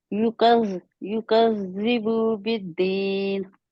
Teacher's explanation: बू को थोड़ा भी खींचना नहीं है, छोटा है, क्योंकि जबर जेर पेश बिल्कुल नहीं खींची जाती